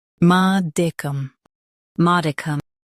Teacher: Emphasize ma and soften dicum.